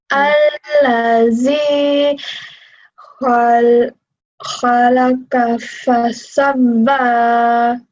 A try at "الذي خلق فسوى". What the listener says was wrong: So here again, what did I say? How do we pronounce this letter? Do we say Z? Where did I say to put your tongue? In between. Yes. So what sound does that make? Just make that sound. The. Tickle your tongue a little bit, yeah? Can you say that for me?